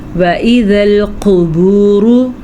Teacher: قاف کو پر پڑھیں گے اور را کو بھی پر پڑھیں گے۔